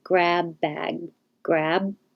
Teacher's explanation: my lips close for the first one bag then i release the air